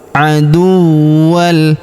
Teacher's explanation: tanwin an huruf wan berharakat tasydid. Maka kita tahan dan tekan terlebih dahulu.